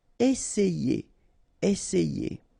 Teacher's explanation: Essayer. Remember, double S, really strong S, and then it opens the E